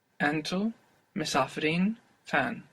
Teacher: And with the een, this een takes the accent.